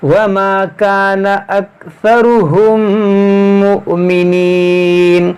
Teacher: मीम साकिन के बाद मीम है, यहाँ पर इदगाम शफवी होगा, यानी गुन्ना करेंगे